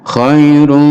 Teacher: Khairun menjadi khairum, diganti mim mendengung dan dipanjangkan dengungnya. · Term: idgham bi gunnah